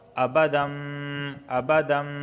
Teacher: یتمنوہ ابدم، تنوین کے بعد با آیا ہے تو یہاں پر اقلاب ہوگا، اقلاب ابدم ابدم، علامت کے طور پر اقلاب مطلب یہ ہوتا ہے کہ اس کو میم کی آواز کے ساتھ پڑھتے ہیں